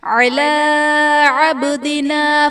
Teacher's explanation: عبدنا میں با حرف قلقلہ ساکن ہے تو یہاں پر قلقلہ خوب ظاہر کریں گے۔